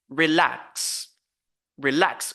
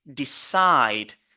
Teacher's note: we focus on the second syllable with a higher pitch, louder and stronger